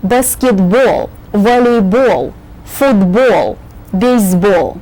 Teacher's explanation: when you say the names of all the ball games, remember the accent is on the ball syllable